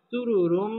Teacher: সুরুরুম, এই রটাও পুর হবে, সুরুরুম, এটা হচ্ছে ইদগামে বা গুন্না। তানবিনের বামে মিম আসছে, মিম ইদগামে বা গুন্নার হরফ, এখানে গুন্নার সহ মিলে পড়তে হবে